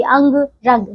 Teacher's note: अंग यह अनुस्वार है, इसे नाक से बोला जाता है